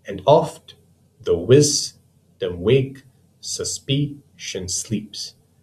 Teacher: in each pair there's an unstressed followed by a stressed syllable. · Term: iambic pentameter